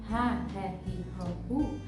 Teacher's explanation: fazer esse leve som aspirado de um R bem fraquinho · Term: leve som de R